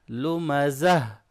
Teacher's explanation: جب وقف کریں گے تو سرکل شیپ میں جو تا ہے اس کو ہم ہا کی آواز دیتے ہیں